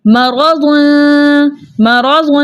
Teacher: را کے اوپر زبر ہے، اس لیے اس را کو ہم موٹا پڑھیں گے · ہم ناک میں گنگنی سی آواز کو چھپا کر پڑھیں گے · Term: اخفا